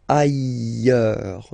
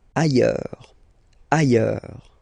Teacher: final S not pronounced, and then you've got this y sound